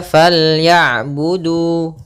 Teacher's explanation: Panjangnya untuk huruf du adalah 2 harokat. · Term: mad tabi'i